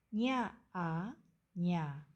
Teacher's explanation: The first syllable starts with the consonant nya, combined with the vowel a. This vowel has a low tone, so remember to lower your voice when pronouncing a.